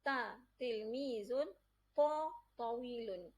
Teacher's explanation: Huruf ta dan ta ni, dua-dua huruf ni terletak di hujung lidah. Yang mana ketika mana kita sebut huruf ta dan ta, hujung lidah kita akan ditekan ke pangkal gigi kapak bahagian atas.